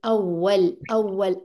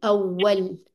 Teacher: अब देखिए अगर मैं कहूँगी ना अव्वल, अव्वल की आवाज ही चेंज आ रही है, अव्वल अव्वल, वाव पे राउंडिंग पूरी पूरी करनी है